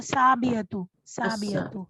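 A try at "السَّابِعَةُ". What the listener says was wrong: अस्साबियतु। आपको शमसी और उसका ख्याल रखना चाहिए, ठीक है, जब अलिफ लाम लगाती हैं तो साबियतु हो जाएगा, ठीक है।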